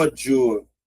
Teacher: No exemplo de baixo, ó, ódio, ó aquele lancezinho que eu falei, ó, eu tenho a sílaba anterior com acento, então eu tenho aqui, ó, uma paroxítona terminada em ditongo. Ó, veja que a letra O é mais forte, ó. A letra I é uma semivogal, tá vendo? Então tenho ditongo crescente oral.